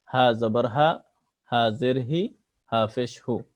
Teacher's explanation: গোলহা কণ্ঠনালীর শুরু থেকে গোলহাকে স্বাভাবিকভাবে পড়তে হয়।